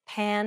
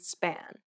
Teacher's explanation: hand over your mouth and compare the words pan and span note how there is a burst of air in the first p but none in the second · the same as the b sound however which is much harder this p sound is said without aspiration meaning you should not release a burst of air when pronouncing this sound